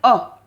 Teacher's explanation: ये अ जो है ये मध्य स्वर है, क्योंकि इसके उच्चारण में जीभ का जो बीच का हिस्सा है वो हल्का सा ऊपर उठता है। जब हम बोलते हैं अ, तो आप बोल के देखो तो जीभ का बीच का जो हिस्सा है मध्य का, वो हल्का सा ऊपर उठेगा, तब जाकर ये स्वर निकलता है अ।